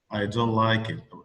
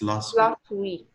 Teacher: American or British, both of them, they don't pronounce the last T.